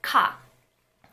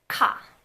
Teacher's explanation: It's a strong aspirated velar stop.